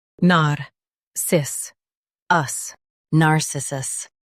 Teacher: Stress cis and keep nar soft.